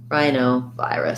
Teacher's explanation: rhinovirus secondary stress on vi rus with the schwa · So stress on the I diphthongs